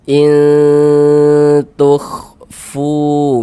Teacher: Kemudian di bagian in-nya itu suaranya itu kita tahan, kita panjangkan sebentar, kita dengungkan. Kita dengungkan ya sepanjang dua harakat. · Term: ikhfa hakiki